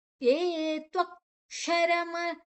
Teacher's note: ಷಣ್ಮುಖ ಶ ಅಂತ ಹೇಳ್ತವೆ ನಾಲಿಗೆಯನ್ನ ಮಡಚಿ ಹೇಳುವಂತದ್ದು